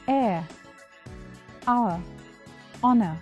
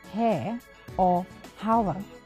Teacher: I do not pronounce the h sound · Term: H is silent